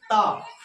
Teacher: ता का मखरज अगर हमको याद है कि ता का मखरज जबान की नोक, सनाया उलिया की जड़